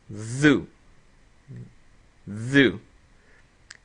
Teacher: Now let's look at the dhaal with the dhamma. So the dhaal is the th sound, but when we add the dhamma, it's gonna have a short oo. So when we combine the two, it's dhu.